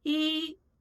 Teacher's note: When E stands alone, acts as an ordinal, or appears at the end of a word, it's pronounced with the first tone.